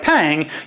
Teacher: your tongue never goes anywhere near the alveolar ridge. It’s all up at the back, pillowing up against the soft palate. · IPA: [pæŋ]